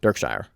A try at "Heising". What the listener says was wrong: But it's ing at the end. Dirk Heising? Heising. Heising.